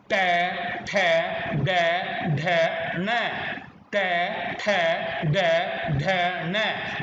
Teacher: हमारी जीभ बिल्कुल ऊपर को जा रही है, ये है मूर्धा